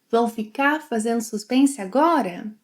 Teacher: Remember that she drops the final R.